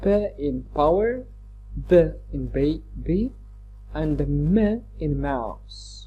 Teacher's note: bilabial sounds are consonant sounds produced by using both lips together. That is, as you can see from the picture here, that is the upper lip touches the lower lip, and when they are like attached together, when one touches the other, we can produce sounds like p, b, and the m.